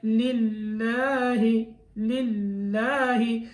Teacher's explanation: للہ، للہ میں ظاہر ہے میں نے یہ بتایا تھا کہ لفظ اللہ کا جو لام ہے اس سے پہلے زبر ہو پیش ہو تو موٹا پڑھا جاتا ہے، زیر ہو تو باریک پڑھا جاتا ہے۔ للہ میں لفظ اللہ کے لام کو باریک پڑھنا ہے